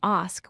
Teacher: The correct pronunciation is ask with a long a sound, not ax as many people say